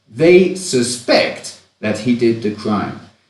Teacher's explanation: suspect in this context is a verb, and so the stress falls on the second syllable